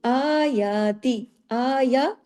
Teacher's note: سب باریک ہے لیکن کھڑی زبر اوپر ہے نا، تو الف کے برابر کھینچا